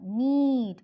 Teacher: It is long. This vowel is described as a front, close, unrounded vowel.